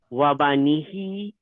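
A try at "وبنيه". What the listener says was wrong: Well, I want to hear the ya.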